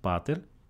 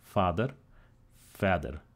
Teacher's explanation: The P became an F. It lenited.